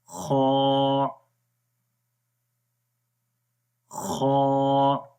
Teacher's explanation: خا کو موٹا پڑھیں گے